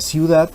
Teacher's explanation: en la palabra ciudad Tenemos también concurrencia vocálica de dos vocales cerradas · Cuando ambas vocales son cerradas, se produce el diptongo neutro u homogéneo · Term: diptongo homogéneo o neutro